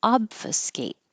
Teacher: Close your lips for the B, but don't release the B. Just hold them closed until you open with the top teeth behind the bottom lip to make an F. Obfuscate, and hold that T.